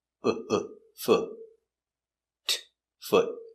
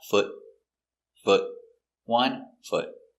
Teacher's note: It's a stop T, so we don't say foot. We put our tongue up and stop.